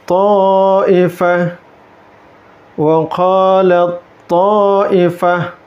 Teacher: ta'nya melebur ke huruf ta'nya